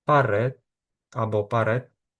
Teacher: в кінці слова не вимовляється або звучить ближче до звуку т десь дуже приглушено